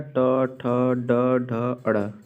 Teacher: ठीक है, और म से हो जाएगा मूर्धन्य, अर्थात ट वर्ग का उच्चारण स्थान क्या है? मूर्धन्य है